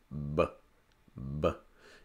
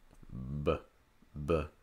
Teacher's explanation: Also, for the br sound, for the B, press your lips together, b, b, and then also make sure your throat is vibrating